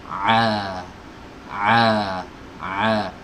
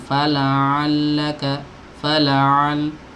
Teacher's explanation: Huruf ain itu keluar dari tenggorokan bagian tengah ya, tenggorokan bagian bagian tengah di sini. Jadi tenggorokan itu ada 3 bagian, teman-teman.